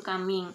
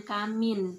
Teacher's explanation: Namun pada masyarakat pedalaman mengucapkan kata kaming dengan kamin. Jadi huruf G-nya itu tidak terdengar pada saat orang-orang atau masyarakat pedalaman mengucapkan kata kaming.